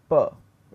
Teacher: And p, there is a slight delay, a slight delay of around 20 milliseconds or a little bit more. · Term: voice onset time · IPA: /p/